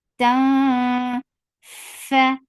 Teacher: This ikhfa is light. So you keep your tongue straight. You are keeping your mouth ready to say letter fa, and you're keeping the sound in your nose.